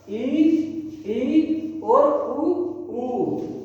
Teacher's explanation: समव्रत मतलब जिसमें मुख द्वार लगभग बंद रहता हो।